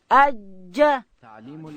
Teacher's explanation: جیم ادا کیږي د ژبې منځ به لوړ تالو ته وروړو.